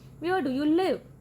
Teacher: ਬੋਲਦੇ ਹੋਏ ਆਵਾਜ਼ ਐਂਡ ਵਿੱਚ ਨੀਚੇ ਜਾਂਦੀ ਹੈ। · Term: ਫਾਲਿੰਗ ਇੰਟੋਨੇਸ਼ਨ